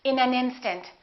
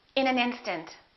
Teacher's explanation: we would connect the final consonant to the next vowel so this n in this a would be said together listen